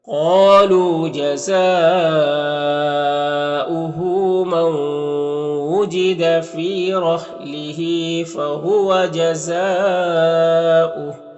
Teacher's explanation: نون کو واو سے ملا کر غنہ کے ساتھ پڑھیں گے. اس کو ادغام ناقص کہتے ہیں. · جزا میں مد متصل ہے اور یہاں پر حمزہ واو کی شکل میں ہے اور یہاں پر وقف کریں گے تو یہ ہا کا الٹا پیش سکون سے بدل جائے گا